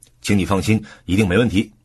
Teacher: 重音放在没问题上，强调保证事情的结果